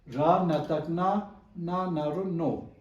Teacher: raise the tone because we see superscribed ra on top of consonant na